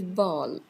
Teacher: it is stop, it is not aspirated, it is voiced